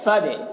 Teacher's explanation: یہ فا کو دال سے ملائیں گے فد یہ الف کو نہیں پڑھا جائے گا فد اور دال میں قلقلہ بھی کر رہے ہیں فد خلی